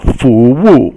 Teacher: Fu is second tone or rising, and Wu is fourth tone